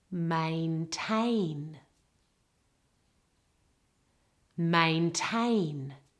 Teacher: In the first one, people often mispronounce the A vowels and they put the stress on the wrong syllable or they make it too flat, okay? There are two A vowels in this word and the emphasis and stress is all on the second syllable.